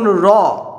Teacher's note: এরপর হচ্ছে কম্পিত ধ্বনি, যেমন র, এই ধ্বনির উচ্চারণে শ্বাসবায়ুর পথে যাতায়াতে ফলে জিহ্বা বারবার বাধা দেয় এবং শ্বাসবায়ু সেই বাধা ঠেলে বেরোতে চায়, তখন জিহ্বা কম্পিত হয়